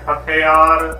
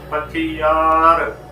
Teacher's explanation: ਸਿਹਾਰੀ ਲਘੂ ਦੇ ਵਿੱਚ ਤੇ ਬਿਹਾਰੀ ਹਮੇਸ਼ਾ ਹੀ ਦੀਰਘ ਲੰਬੀ ਧੁਨੀ ਦੇ ਵਿੱਚ ਉਚਾਰਨ ਕਰਨੀ